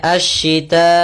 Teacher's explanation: panjang dulu 4 harakat baru i. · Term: mad wajib muttasil